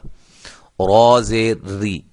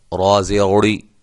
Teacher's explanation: را زیر ری، اب دیکھیں یہ را کے اوپر زبر نہیں ہے، را کے نیچے زیر ہے، تو شروع میں ہم نے آپ کو کیا بتلایا تھا کہ را کے اوپر زبر یا پیش ہو تو را کو موٹا کریں گے۔ یہ را کے نیچے زیر ہے، لہذا را باریک ہو رہی ہے۔